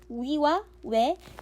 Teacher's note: 원순모음 같은 경우는 위와 외가 있는데 평순모음이랑 다른 게 입술이 동그랗게 변하죠.